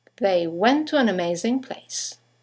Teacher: 2 words, one ending with a T, the next one starting with a T, they run into each other · you have the semi-vowel W that connects the vowels to and an to each other.